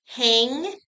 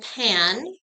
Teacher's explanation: it's still the short a sound just being morphed by the back nasal